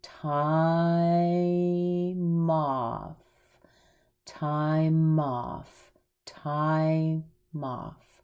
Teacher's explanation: we're going to push the M over into off so we end up with ty Mothe okay if you were